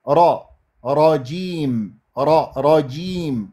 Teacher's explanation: ايضا طرف اللسان اللي هو مقدمه هذا مقدمه يجي وين يجي يضرب بالمنطقه اللحميه ما بعد الثنايا العليا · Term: القرع